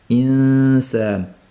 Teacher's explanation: Yo'q, sin ingichka bo'lganligi uchun ixfosi ham insan. Tilimizning uchi sinning mahrajida turish kerak. Kelayotgan havoni esa ichkaridan o'zimiz dimoga yo'naltirib olishligimiz kerak bo'ladi, tilni harakatlantirmasdan.